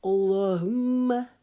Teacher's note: لام کو موٹا کریں گے، میم کے اوپر غنہ کریں گے، ایک الف کی مقدار رکیں گے.